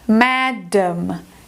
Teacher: esse segundo A é a sílaba mais fraca, ok? Então ela vai ser reduzida ao schwa.